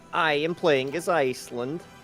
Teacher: hitting the first syllable of every word with force, adding breathiness to vowels using a tapped or trilled R. It sounds bouncy, melodic, and slightly pllosive. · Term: Icelandic accent